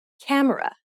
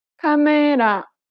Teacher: in Korean, each syllable is pronounced for the same amount of time and gets equal stress.